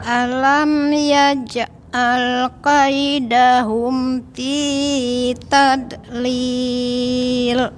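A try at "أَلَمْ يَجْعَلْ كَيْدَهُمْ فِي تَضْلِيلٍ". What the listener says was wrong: Ini pakai dot Ibu ya, bukan pakai dal. Bukan fi tadlil tapi fi tadlil.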